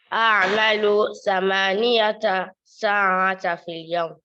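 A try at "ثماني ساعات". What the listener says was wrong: ثمانية, not ثمانية. You can see there's no ta in front of this here. 8 ساعات في اليوم.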